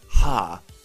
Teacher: the glottal fricative ha is fairly common too